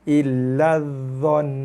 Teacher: Illa dha nun sabdu. Tekan pada nun, dengung. Kemudian kita waqaf, berhenti, na tak bunyi lagi lah.